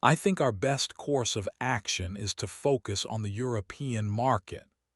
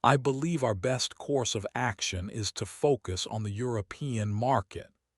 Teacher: This is when you make a declarative statement, but you end it with a rising tone, making it sound like a question. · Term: upward inflection